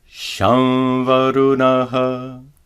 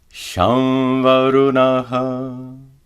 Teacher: Notice that the anuswara is pronounced as a nasalized va.